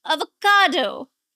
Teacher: Now there are four syllables and the stress is on the third syllable.